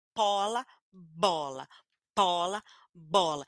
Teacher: porque o p e o b são bilabiais o p e o b são plosivos